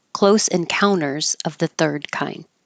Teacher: when the t comes after the n and the unstressed syllable you don't have to say the T Close Encounters of the Third Kind or Close Encounters of the